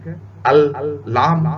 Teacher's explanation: اوپر کے دانتوں کے بالکل پیچھے جا کر آپ کی زبان لگ رہی ہے